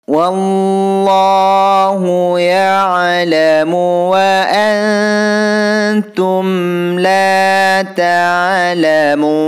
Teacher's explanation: Wallahu di sini hukum bacaan lafaz Allah yang harus dibaca tebal atau tafhim karena diawali harkat fathah.